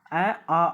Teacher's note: வாய் திறத்தலாகிய முயற்சியால பிறக்குது வாயை திறக்கக்கூடிய அந்த முயற்சியினாலதான் அ ஆ அப்படின்ற இந்த இரண்டு எழுத்துக்களும் பிறக்குது